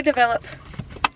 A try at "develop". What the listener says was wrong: Sounds like you're saying double up. You're saying develop. It's develop.